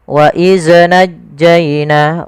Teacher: Jangan sampai huruf zal ini terpantulkan. Kesalahan yang terjadi adalah memantulkan zal ketika dia berharakat sukun.